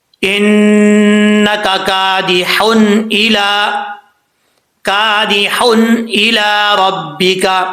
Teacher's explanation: نون تنوین کو ظاہر کر کے پڑھا جائے گا اور قلقلہ بھی نہیں ہوگا